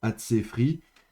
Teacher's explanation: il perd son dagesh léger, donc c'est bien Atsefri avec un P, une bégat kefat qui est fricative